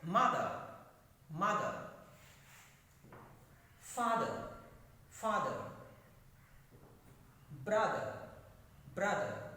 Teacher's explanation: two syllables where there is a stress on first syllable